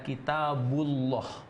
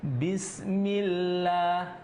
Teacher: setiap huruf yang berharakat fathah dhomah sebelum kalimat Allah itu maka ketika masuk pada kalimat Allah bunyinya tebal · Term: tafkhim